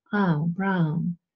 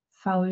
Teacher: this looks like the symbol combination used for English brown but for brown you open up your mouth a little bit more you have more of a glide